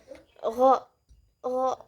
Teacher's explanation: huruf gho keluarnya itu tabaqi, dari langit-langit belakang. Kemudian cara keluarnya itu ihtikaki.